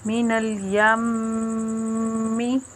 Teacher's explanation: میم مشدد کا غنہ ہے، ایک الف کے برابر رک کر کرتے ہیں